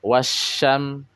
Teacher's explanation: terjadilah tasdid bukan menandakan dua huruf syin di situ Bukan tapi Alif lamnya atau lamnya dimasukkan kepada huruf Sin maka lamnya sudah tidak dibaca lagi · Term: idgham, idgham mutaqarribain